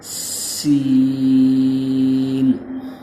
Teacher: جب زبان کی نوک اگلے جو دانت ہیں اوپر والے اور نیچے والے ان کے درمیان تک آ جائے تو اس سے سین ادا ہوتا ہے سختی کے ساتھ۔